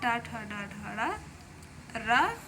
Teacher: ऋ ट वर्ग यानी कि ट ठ ड ढ र और मूर्धन स इसका उच्चारण जो होता है वो मूर्धा से होता है